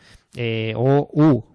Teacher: la O y la U se acercan, se redondean y se acercan más a la forma de la boca redondeada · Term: más redondeadas